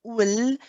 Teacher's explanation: So the sound has to then travel and come out from the sides of the tongue. Okay, so you'll see that even in the picture on the left, you can see that the arrows are pointing and then coming out because they have to go around the tongue. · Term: lam